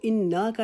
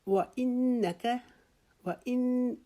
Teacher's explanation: جب ہم نون کے اوپر شد آئی تو ہم نے اس کے اوپر ایک الف کے جتنا رکنا ہے. اس کو انا کا نہیں پڑھیں گے، انا کا نہیں پڑھیں گے.